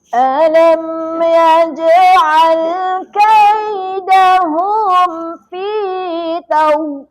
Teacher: Huruf jim tak ada angin. Kalau kita baca Quran, jangan ada angin kan dia. Ia adalah huruf jahar. Jadi tidak perlukan angin tu.